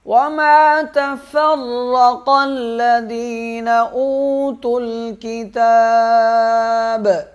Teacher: را کو موٹا پڑھیں گے، سخت پڑھیں گے، قاف کو موٹا پڑھیں گے، اور ذال کو نرم، یا کو ایک الف کے برابر کھینچیں گے، یہ حمزہ واو سے مل جائے گا۔